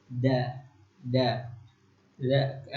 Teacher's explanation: Jadi da itu makhrajatul hurufnya itu jadi tempat keluarnya itu dari mulut. Jadi lidahnya kita itu bertemu dengan langit-langit di atas.